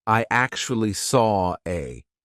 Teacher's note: The reason why we're doing an R here is because we have the or sound of saw and then an A. We have another open vowel sound. Saw a. So, if we didn't have the linking R, the intrusive R, it would sound odd. · if we didn't have the linking R, the intrusive R, it would sound odd. It would sound like I actually saw a we would have to put a gap in there, but we don't like putting gaps in when we speak.